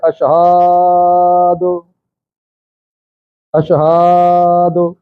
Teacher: اس ہا کو لمبا کر جاتے ہیں، کہہ جاتے ہیں اشہاد